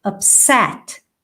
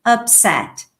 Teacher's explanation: So you need to stress the second syllable, upset. Now, if you are using this word as an adjective, then you need to stress the first syllable, upset.